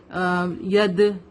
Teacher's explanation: یہ ریڈ letter میں دال از حروف قلقلہ, ٹھیک ہے. تو جب بھی دال پر جزم ہوتا ہے تو ہم اس کو ایسے پڑھتے ہیں ید, یعنی کہ آواز ریٹرن ہوتی ہے